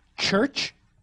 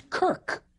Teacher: CH sounds in the South and in Old English corresponded to K sounds in the Scandinavian languages. Church becomes kirk.